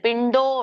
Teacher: ಡೋ ಮಾತ್ರ ನೋಡಿ ನಾನು ಹೆಚ್ಚಿಗೆ ಹೇಳ್ತಾ ಇದ್ದೇನೆ